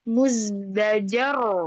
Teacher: ro sukun karena waqaf sebelumnya huruf berharakat fathah maka tebal